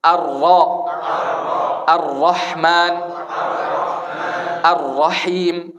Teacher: Ujung lidah selurusnya di atas, nempel ke langit-langit. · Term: ro